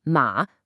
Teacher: Ma for that sharp falling fourth tone.